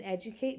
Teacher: because you have this D in between 2 vowel sounds, It often sounds a lot more like a J because we don't want to turn our voice off.